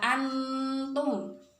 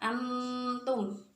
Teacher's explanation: Nun sukunnya dimasukkan ke dalam makhrajnya ta, yaitu lidah dengan pangkal gigi seri. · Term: ikhfa